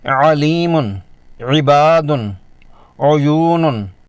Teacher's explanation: اس میں حلق کے اندر آواز پیدا ہوتی ہے، حلق میں ہلکا سا دباؤ اور تھرتھراہٹ محسوس ہوتی ہے، آواز میں گہرائی اور باری پن ہوتا ہے۔ یہ حرف ادا کرتے وقت حلق کے درمیانی حصے کو تھوڑا دبایا یعنی سکویز کیا جاتا ہے، جس سے آواز میں تھوڑی رگڑ اور گہرائی آتی ہے · ہا میں سانس کا بہاؤ زیادہ ہوتا ہے، جبکہ عین میں حلق کے دباؤ کی وجہ سے آواز گہری نکلتی ہے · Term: حرف عین